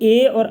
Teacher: कंठ प्लस तालु तो ये हो गया कंठ तालव्य, तो हो जाएगा ये ए और ऐ